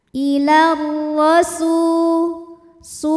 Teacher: maka Sin dipanjangkan dua harakat · ke huruf ro ilar ro R nya dibaca secara tafkhim karena ro berharakat di atas yaitu harakat fathah maka ro dibunyikan dengan tebal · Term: Mad thii ziri